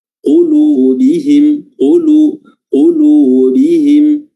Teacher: Qa sini harokatnya dhamma, qulu, ya, qulubihim, qulubihim, ya, lu-nya 2 harokat saja dan bihim harokatnya kasrah, ya, bibir ditarik dan ketika dhammah bibir dimonyongkan